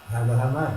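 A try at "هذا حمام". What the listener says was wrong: هذا hammam. Hammam and not hammam. Hammam and not hammam. Hammam is a pigeon. There's a shadda on it. Hammam. It's a shadda on the meme.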